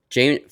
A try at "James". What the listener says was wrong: It's not Jameis, it's James. You said Jameis.